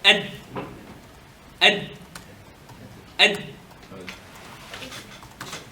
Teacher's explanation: it's the tip of the tongue with the roots of the teeth